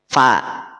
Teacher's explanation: pangkal lidah tidak naik alias bunyinya jadi tipis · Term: huruf Fa